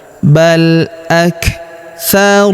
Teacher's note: Huruf kaf berharakat sukun. Kita berikan hambusan. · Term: hembusan